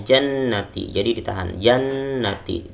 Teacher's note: Bacanya jannati, jadi ditahan, jannati, gunnah ditahan sepanjang selama kita memanjangkan mad tabi'i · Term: nun gunnah